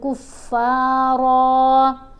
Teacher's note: بعد ہی پڑھنا ہے، یہاں را کے اوپر 2 زبر ہیں، وقف کرنے کی صورت میں 1 زبر پڑھی جائے گی اور را کو موٹا بھی پڑھیں گے لمبا بھی پڑھیں گے